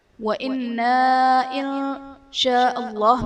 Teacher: نون ساکن کے بعد حروف اخفا میں سے شین ہے تو یہاں پر اخفا کا قاعدہ ہوگا، یعنی نون ساکن میں ہم غنہ کر کے پڑھیں گے